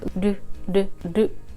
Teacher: So when you say ru, the tip of your tongue touches the roof of your mouth. It's a flapping sound, so it's like ru.